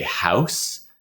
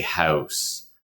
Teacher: an American would be more likely to say house. It's got a bit more of an a sound